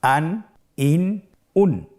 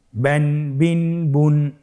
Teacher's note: প্রত্যেকটি উচ্চারণের শেষে দন্তন উচ্চারিত হচ্ছে